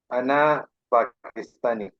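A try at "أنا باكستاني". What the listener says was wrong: آپ کو یہ بات سمجھ آ رہی ہے کہ عرب لوگ جو ہیں ان کے پاس پی نہیں ہے، وہ با ہے، با با با باکستانی.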